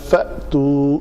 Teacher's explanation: فأتو حمزہ کے اوپر جزم ہے جس کو جھٹکے سے پڑھیں گے